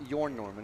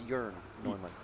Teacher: that's the umlaut over the O, and that turns the O into an eh sound